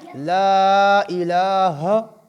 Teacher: لمبا کریں گے۔ لا الہ، ہا حروف حلقی میں سے ہے، اس کو حلق سے ادا کریں گے